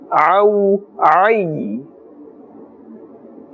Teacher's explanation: Remember, ain, the makhraj is from the center of the throat.